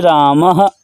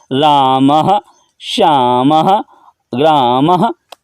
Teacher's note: विसर्ग ह का उच्चारण आएगा, रामः, श्यामः, ग्रामः, आदि में जो मकारोत्तरवर्ती आकार है के बाद जो 2 बिंदु है, क्या है, बिंदु है, उसी का को विसर्ग कहते हैं।